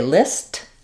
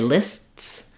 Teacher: When I say list, you can hear the t. When I say lists, I'm just stopping my S, closing off the air, and then going back to the S. So it's almost like s with a stop and then another s sound.